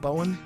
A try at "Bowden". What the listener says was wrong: It's with the D.